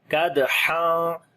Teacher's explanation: دال کے اوپر جو ہے وہ قلقلہ کریں گے, کمزور قلقلہ ہوگا